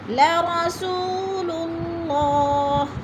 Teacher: اللہ کو پر کر کے پڑھا جائے گا، اللہ سے پہلے لفظ لام کے اوپر پیش ہے تو اللہ پر پڑھا جائے گا